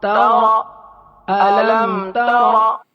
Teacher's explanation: اب یہاں میم ساکن کے بعد تا آ گیا ہے، نہ با ہے اور نہ میم ہے، تو یہ اظہار شفوی کا قاعدہ ہوا، یہاں غنہ نہیں کریں گے